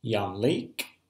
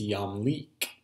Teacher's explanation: So here we have the tsere, here are the hirik yod. The jussive has shortened the vowel from the hirik yod to its tsere.